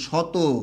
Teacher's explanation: শব্দের শেষে যে অ থাকবে সেই অটা সাধারণত ও হয়ে যাবে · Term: সংবৃত